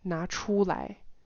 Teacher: Notice he doesn't emphasize the 出. He emphasizes the 拿, the taking action.